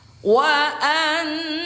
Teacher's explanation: Huruf nun yang bertasydid, hukum tajwidnya namanya gunnah, dibaca dengung 2 harokat.